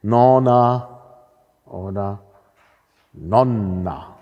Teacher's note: Gut, wir haben jetzt hier Konsonanten im Wortinneren, die es in einer langen und kurzen Variante gibt. Also Länge ist distinktiv, Konsonantenlänge.